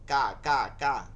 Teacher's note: এটার কফ মধ্যে কফের কোনো টান রাখবো না, একদম নরম যতটা পারি। এটারে হামস হয় কিছুটা ক্ষয়ের মতন, একটু ভিতর থেকে বাতাস বের হয়ে আসে,